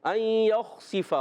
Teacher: ایک الف کا غنہ کریں گے